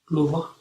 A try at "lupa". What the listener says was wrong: What do you have? You have tapa. Do you have V or P? P, yes.